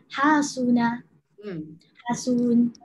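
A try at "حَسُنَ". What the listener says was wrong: Pendek je, jangan hasun. Itu namanya panjang.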